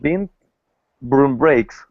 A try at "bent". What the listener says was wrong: Okay, so remember this word is bent, not beat. Bent.